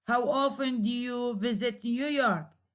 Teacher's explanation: at the end of each word there is a falling intonation